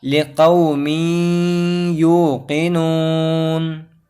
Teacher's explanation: سے یا آیا جو کہ دوسرے کلمے میں آیا، تو یہاں تنوین کے بعد یا دوسرے کلمے میں آئی ہے تو ہمیں غنہ کے ساتھ پڑھنا ہے